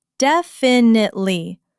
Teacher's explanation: The stress is heavy on the very first syllable